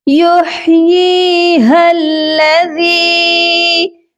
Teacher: ذال کو نرمی سے پڑھا جائے گا، اور ہماری جو زبان ہے اوپر والے دانتوں کے کنارے سے سافٹلی ٹچ ہو کر اس کی ادائیگی ہوگی۔ اور یا کے اوپر دیکھیے مد بھی ہے، ہم نے اس کو لمبا بھی کرنا ہے۔